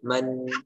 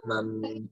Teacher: ini disebut dengan iqlab ya artinya e mengganti gitu ya Nah mengganti huruf nun ya ataupun bunyi tanwin bunyi n ya menjadi suara mim